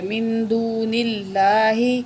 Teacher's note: اللہ کے نام سے پہلے نون کے نیچے زیر ہے، تو اللہ کو ہم باریک کر کے پڑھیں گے